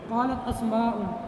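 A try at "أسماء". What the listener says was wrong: اسماء نہیں، غیر منصرف ہے. اسماء.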